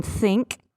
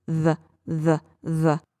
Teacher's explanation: the unvoiced th as in think and the voiced th